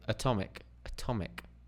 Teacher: we reduce the first one to the schwar sound